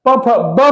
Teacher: जब आप प का उच्चारण करते हैं तो बिना होठ को सटाए हुए आप प का उच्चारण नहीं कर सकते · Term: ओष्ठ